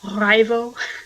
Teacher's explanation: Rival is actually a very rolled R